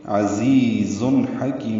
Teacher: अजीज में दोनों ज़ाते सफ़ीर की आवाज़ से निकालेंगे, अजीज़ुन हकीम, जुन में इजहार है, आगे हा रहा है उर्फ़ इजहार में से, हा वस्ते हलक से निकालेंगे और काफ को लंबा करेंगे, अजीज़ुन हकीम।